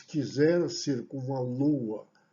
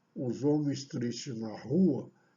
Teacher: Esse lua e rua estão pronunciados também com impulso sonoro único. Eu estou juntando as vogais U e A desse encontro vocálico descendente.